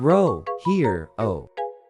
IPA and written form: ˈhɪəroʊ (hero)